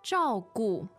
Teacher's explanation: so that's two fourth tones